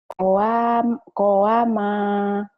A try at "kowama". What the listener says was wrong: kowama, ma-nya yang panjang.